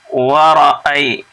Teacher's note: या साकिन से पहले ज़बर है इसलिए यहाँ पे या लीन हुआ